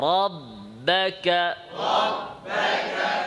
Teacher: را را ربك را را ربك ربك র মোটা, বা পাতলা, র থেকে যখন বাতে ঢুকবেন তখন আওয়াজ পাতলা হয়ে যাবে